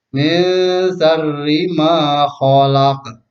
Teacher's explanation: di ujung ayat ini ada huruf qalqalah, maka bunyi bacaannya dipantulkan